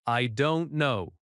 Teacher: The word no drops slightly at the end.